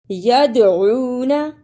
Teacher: دال پر قلقلہ بھی کرنا ہے اس لیے کہ دال پر جزم ہے